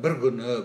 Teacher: Бір күні дегенде ырдан кейін келген к, г-ға ауысады. Бір күні болып айтылады. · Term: прогрессивті ассимиляция